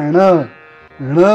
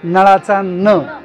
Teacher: बाणाचा उच्चार करत असताना जीभ पाठीमागून पुढे वरती टाळू टेकलेली आणि न मी जीभ बाहेर दाखवते दातांच्या मध्ये घालून नळाचा न तो तसा उच्चार झाला तरच करेक्ट आहे नळासाठी आणि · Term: बाणाचा ण